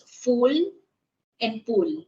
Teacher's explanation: Sometimes I pronounce letter F into P, vice versa.